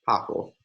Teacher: we have an underlying short stop, an underlying non-geminate stop, pa, which becomes a fricative between two vowels